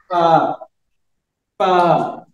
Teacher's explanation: नीचे वाले होंठ का शिकम और सनाया उलिया का किनारा, ठीक है, यहां से फा अदा होता है।